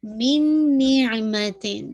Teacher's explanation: نون ساکن کے پاس نون ہے، تو یہ کامل ادغام ہے وتھ غنہ کے ساتھ